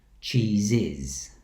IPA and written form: ʧiːzɪz (cheeses)